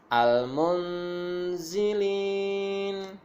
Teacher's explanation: Jadi nunnya ini terbaca tapi nggak kelihatan. Samar-samar gitu ya. Nah, selain itu juga, jadi zain ini langsung masuk kepada huruf zain. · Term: ikhfa hakiki